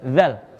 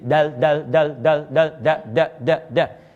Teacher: Tapi kalau dalam ilmu aswat, sebetulnya yang kedua, dal lebih sulit yang ini. Zal itu disebut takhfif, rahwah. Makanya ringan, udara keluar. Tapi kalau dal itu disebut harful infijar.